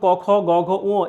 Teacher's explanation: যেসব ব্যঞ্জন ধ্বনি উচ্চারণের সময় জিভের পিছনের অংশ উঁচু হয়ে আল জিভের কাছাকাছি নরম তালুর কাছে বায়ুপথে বাধা সৃষ্টি করে, সেগুলোকে আসলে কণ্ঠ ব্যঞ্জন বলে। তো এই কণ্ঠব্যঞ্জন, অর্থাৎ আপনি যখন ক খ গ ঘ উ এই যে বিষয়গুলো বা এই বর্ণগুলো যখন উচ্চারণ করবেন, তখন কিন্তু একদম ভেতর থেকে আসবে, হ্যাঁ, গলার একদম ভেতর থেকে, কণ্ঠের ভেতর থেকে।